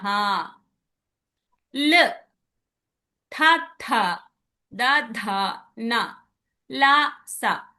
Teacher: ఇవి దంతాలకి తగిలి వస్తున్నాయి కాబట్టి దంత్య.